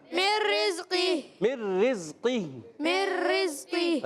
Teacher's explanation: قاف کو موٹا رکھیں گے، حروف مستعلیہ میں سے ہے